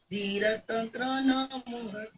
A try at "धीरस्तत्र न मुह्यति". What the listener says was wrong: मुझे धीरन सुनाई दिया और तंत्र बोला आपने तत्र है